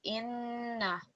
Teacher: So inna, we don't want to prolong that anymore. Yes, we want to stress it because of the shadda, but we don't want to actually prolong the stroke.